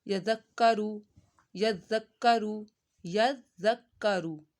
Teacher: ज़ाल नरमी से, काफ को पतला, यज़क्करु। काफ के ऊपर ज़बर है तो इसको खींचना नहीं है, तो बस काफ को आपने 2 दफ़ा पढ़ना है, ज़ाल को भी आपने 2 दफ़ा पढ़ना है।